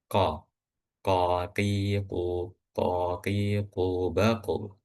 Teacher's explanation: Nah, kalau kita ingat ee huruf qf dan huruf kaf itu termasuk huruf yang diucapkan ee dengan lidah ya. Huruf qof itu lidah paling belakang. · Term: huruf qaf